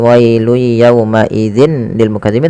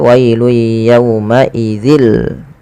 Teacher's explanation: kita masukkan ke huruf lamnya secara langsung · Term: idgham bila gunnah